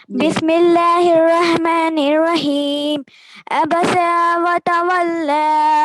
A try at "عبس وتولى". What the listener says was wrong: ابس نہیں بیٹا, حرف عین ہے یہاں پر, اور عین کہاں سے ادا ہوتا ہے آپ کو معلوم ہے, وہاں سے ادا کیجیے. عبس وتولى اس طرح سے پڑھیں.